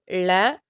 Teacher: நாவின் நுனி மேல் நோக்கி வளைந்து வருடுதலால் பிறக்கும் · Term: சிறப்பு லகரம்